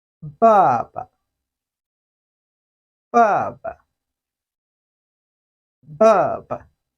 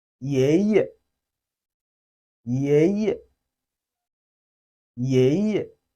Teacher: the first syllable uses one of the main tones, while the last one does not have a tone. That means the last one belongs to the fifth tone. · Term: neutral tone